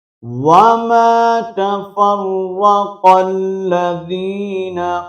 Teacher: اور قاف کو ہم نے آگے لام کے ساتھ ملانا ہے